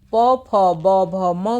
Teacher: प, फ, ब, भ, म का उच्चारण हमारे ओष्ठ से होता है।